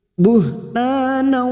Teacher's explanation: huruf ta fathah diikuti alif 2 harokat mat tabi'i